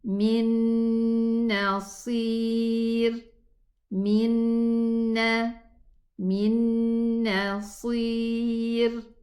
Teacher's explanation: There is a ghunna, And the scholars said that this ghunna belongs to the noon, not the first one, not the sukoon noon, but the other noon that came after the noon sukoon, which is a noon fatha.